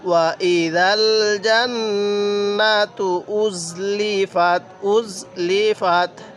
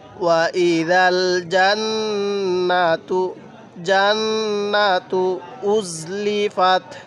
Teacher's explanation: এরপরে ওয়াইদাল জান্নাতু, জান্নাতু এই নুনের মধ্যে গুন্নাহ করব, তবে টান দিব না